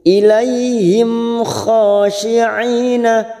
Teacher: kha fathah berdiri atau alif kecil 2 harokat kita panjangkan. Khashi'ina, ain yang bertemu ya, ain yang berharakat kasrah bertemu ya sukun 2 harokat kita panjangkan.